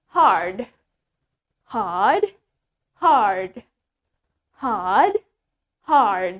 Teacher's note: But in American accent, we pronounce the R clearly. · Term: R sound